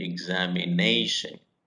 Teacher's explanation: when you say the word examination, there are five syllables, examination, and you have to have the stress on ne, examination.